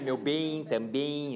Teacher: o E tem um som de E mesmo, depois o M tem som de I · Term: I nasal